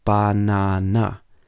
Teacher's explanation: in banana the second syllable would be stressed · So in banana, the second syllable will be stressed, second of the third syllables, the second of the three syllables.